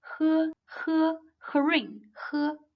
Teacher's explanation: The air stream is expelled from the lungs, causing some frictions in the vocal tract. With no vibrations of vocal cords, it sounds like h of herin.